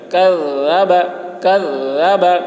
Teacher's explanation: کاف کو بھی باریک پڑھنا ہے، ذال کو بھی باریک پڑھنا ہے